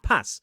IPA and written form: pæθ (path)